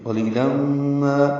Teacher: قلیلہ میں قوف پر ہے، لام باریک ہے، لی یا مدہ ہے، تنوین کے بعد میم آنے کی وجہ سے ادغام ہے، غنہ کریں گے۔ قلیلا ما ادغام ناقص مع الغنہ، ما الف مدہ، 2 حرکات لمبا کریں گے۔